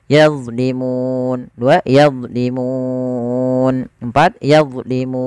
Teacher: mu di sini kita boleh baca 2, boleh 4 atau boleh 6. Yazlimun, 2 yazlimun, 4 yazlimun. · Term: mad arid disukun